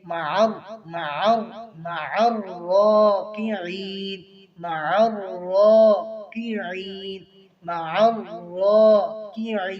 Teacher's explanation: عین کو واضح کریں گے مع الراکعین مع الراکعین مع الراکعین را کے اوپر کھڑی زبر بھی ہے اور مشدد بھی ہے مشدد کو سختی کے ساتھ اور را کو ایک الف کے برابر کھینچیں گے